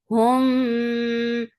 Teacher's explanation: this is ikhfa shafawi. You're hiding the sound in your nose.